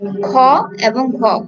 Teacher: কারণ হচ্ছে এগুলো উচ্চারণের সময় আমাদের শ্বাস বায়ু বেশি নির্গত হয়, সেই জন্য এগুলো হচ্ছে মহাপ্রাণ বায়ু। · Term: মহাপ্রাণ বর্ণ